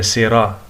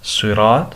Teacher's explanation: سواد کو موٹا کر کے پڑھیں گے، را کو موٹا کر کے پڑھیں گے